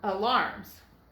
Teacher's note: So we have another vowel that is open because it's right before the split, but it is not accented. The accent is on the second syllable of this word. And so the A is going to make the schwa sound.